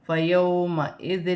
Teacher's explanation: واو ساکن سے پہلے زبر ہے تو واو لین بنے گی، اسے کھینچا نہیں جائے گا، زیر حمزہ کے نیچے ہے اور دو زیر کی تنوین کے بعد لام آ رہی ہے تو یہاں دو زیر کی تنوین میں غنہ نہیں کیا جائے گا۔